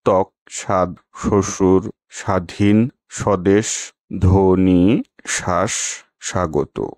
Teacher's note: ব বর্ণের সাধারণ উচ্চারণ ব, তবে ফলা হিসেবে এই বর্ণের উচ্চারণে স্বাতন্ত্র্য আছে। শব্দের আদিতে ব ফলা যুক্ত ব্যঞ্জনের ব ফলা সাধারণত উচ্চারিত হয় না